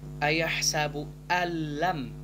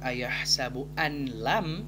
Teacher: nun sukun bertemu dengan huruf lam, maka hukum bacaannya adalah idgham bila gunnah atau idgham tanpa dengung. Maka untuk membacanya kita membaca ayahsabu allam, bukan ayahsabu anlam, namun ayahsabu allam yarahu ahad.